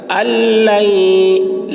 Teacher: حمزہ کو لام سے ملا کر پڑھیں گے